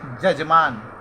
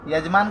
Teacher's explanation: पूर्व में य के बदले ज बोलते हैं